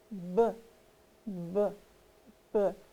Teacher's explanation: if you hold your hand on your throat and you go BBB you can feel your voice box vibrating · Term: voiced